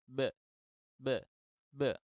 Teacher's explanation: Karena memang dia ini punya sifat syiddah. Ya, ba itu punya sifat syiddah sehingga bunyinya itu atau suaranya tertahan terlebih dahulu sebelum keluar. Nah, ketika udara yang dipompa dari paru-paru untuk menghasilkan bunyi itu tidak bisa keluar, akhirnya tidak ada bunyi yang bisa dihasilkan atau belum keluar karena makhrajnya tertutup.